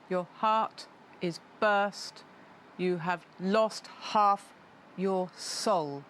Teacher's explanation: But it's not exactly dee-dum, dee-dum, dee-dum, dee-dum, dee-dum. It has 5 stresses, 5 dums